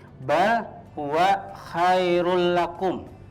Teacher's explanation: Jadi rul, bukan run la ya, tapi rul masuk ke huruf lam tapi nggak ada dengungnya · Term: idgham bila gunnah